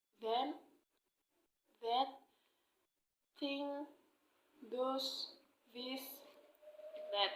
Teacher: So this consonant can be articulated with the tip of the tongue touching the upper teeth. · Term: interdental